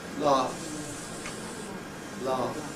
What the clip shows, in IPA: lɑːf